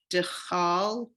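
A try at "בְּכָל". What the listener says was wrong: Careful. Look at the vowel under the chaf. It's not dachal. See the dot?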